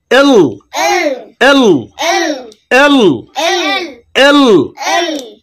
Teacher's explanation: এলটার উচ্চারণ করতে হবে জিহ্বার আগা সামনের উপরের দাঁতের গোড়ার সঙ্গে লাগিয়ে উচ্চারণ করতে হবে